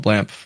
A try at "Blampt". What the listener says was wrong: when said it, it sounded like it was an F instead of a T.